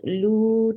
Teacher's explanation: Lu 2 counts long. Circle your lips.